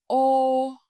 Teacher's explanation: this sound is more close and tighter. Your lips make a smaller, rounder circle, and your tongue moves slightly higher inside your mouth. It sounds close to the English long O in go or home.